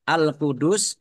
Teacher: Alqudus alif lam qamariah ditandai lamnya dibaca sukun kemudian sin-nya dibaca sukun karena waakaf dan dibaca pendek karena tidak ada tanda panjangnya